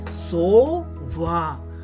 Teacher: голосніше ми промовляємо другий склад сова туди падає наголос